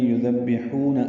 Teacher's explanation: ہا وسط حلق سے ادا کریں گے اور 2 حرکات لمبا کریں گے، یذبحون ابناءکم۔